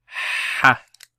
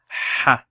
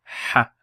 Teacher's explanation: all the way down from the lungs. Ha. Bottom of the throat. Ha. And ha is because it's hollow.